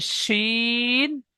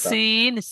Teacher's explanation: নোক্তাওয়ালা তিনটে অক্ষরটি একটু চেপে পড়তে হবে শিন। আর নোক্তা নেই অক্ষরটি পড়তে হবে হালকা সিন, সিটি মারার মতন।